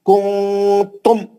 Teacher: ذرا بھی نہیں کھینچیں گے، غنہ نہیں کریں گے میم کا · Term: اظہار شفوی